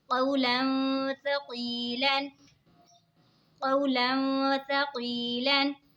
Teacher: दो ज़बर की तनवीन के बाद हुरूफ़े इक़फ़ा का ता आ रहा है तो इक़फ़ा होगा यानी गुन्ना करके पढ़ेंगे। और या साकिन से पहले ज़ेर है तो या मद्दा होगा, ठीक है, इसीलिए इसको खींच के पढ़ेंगे।